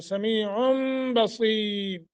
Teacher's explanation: नून तनवीन के बाद बा है तो यहाँ तनवीन को मीम से बदल कर पढ़ेंगे